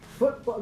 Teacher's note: Now, a glottalization is what happens in words such as football, where this T gets turned into a glottal stop, which is represented sort of like a question mark with no dot. Football, the T in football gets either turned into a glottal stop, or the release is turned into a glottal stop